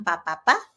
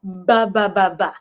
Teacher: ang papa ay ang voiceless, ang ba ay ang voiced